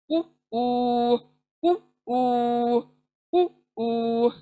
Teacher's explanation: Then next, नून, ये भी देखें, जबान की नोक सामने के दांतों के मसूड़ों को टच होती है, तब जाके नून अदा हो रहा है, नु नू नु नू नु नू। देन वाव, होठ गोल होंगे, तब जाकर वाव अदा होगा, उ ऊ, गोल करें, एकदम से गोल करें, उ ऊ उ ऊ उ ऊ।